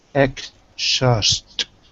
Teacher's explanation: Good, but I'm not hearing the z. I'm hearing a sh instead of a z.